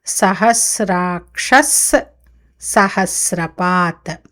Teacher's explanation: సహస్రపాత్లో సా ఉంది కదా మొదటిది, దానివల్ల దాని ముందు వచ్చే విసర్గ సకారం అవుతుంది